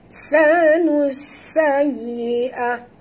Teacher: Sanus sayyi'ah, nus di sini alif lam syamsiah, masukkan bunyi nun ini terus ke dalam sin tanpa membunyikan alif lam. Ini dinamakan idgham syamsi ataupun alif lam syamsiah ya.